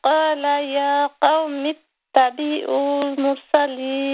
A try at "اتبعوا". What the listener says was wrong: Not tabi'ul, tabi'ul. There's no stretch here, okay?